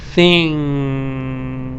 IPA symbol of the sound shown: ŋ